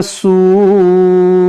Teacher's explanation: यहाँ पर देखें जीम बना हुआ है तो हमें यहाँ रुकना है, और यहाँ पर देखें वाव साकिन से पहले पेश है, वाव मद्दा है, और वाव मद्दा के बाद यहाँ हमजा उसी कलमे में है तो यहाँ मद्दे मुत्तसिल करेंगे